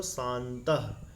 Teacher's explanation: नासिका स्थान वाले अनुस्वार के स्थान पर नासिका उच्चारण स्थान वाला न होता है।